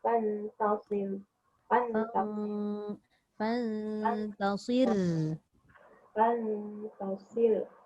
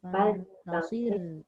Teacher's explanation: Mesti kena ada bunyi takrir tu.